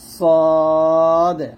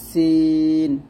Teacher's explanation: সদ মোটা হবে, সিন পাতলা হবে